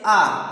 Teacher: तीसरा है वर्तुल अवर्तुल, अर्थात कि ऐसे स्वर जिनके उच्चारण में ना मुख हमारे होंठ ना गोल होते हैं, ना ही फैले हुए ना ही खुले हुए होते हैं, उन ऐसे स्वरों के उच्चारण में जैसे आ। अब ऐसे में ना हमारे होंठ की आकृति ना गोल है ना ही फैली हुई है, दोनों तरह से ये आकृति बन रही है।